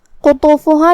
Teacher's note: کلمت قطوفها میں یہاں قاف ہے، قاف کی ادائیگی زبان کے جڑ اور تالو کے نرم حصے سے ہے. قاف حروف التفخیم میں سے ہے جو کہ اس کے بعد حرف الطا ہے. · قاف حروف التفخیم میں سے ہے جو کہ اس کے بعد حرف الطا ہے. قاف اور طا دونوں حروف التفخیم میں سے ہے، تو ہم یہ دونوں حرف کو بھاری آواز میں ادا کریں گے